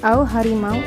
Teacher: diftong atau vokal rangkap atau berubah kualitasnya